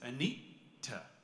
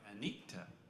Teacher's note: it's a hard T, and there's also like a little bit of a glottal stop before it